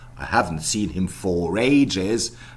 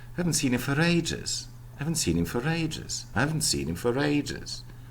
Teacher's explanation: For is almost always unstressed, and therefore reduced to schwa. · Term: weakening of function words